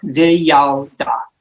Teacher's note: an open syllable vi, then your closed syllable yal